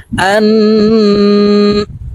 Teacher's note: এই হামজা নুনের সাথে গুন্নার সহিত পড়ব। নাকের বাসি থেকে গুন্না করতে হবে।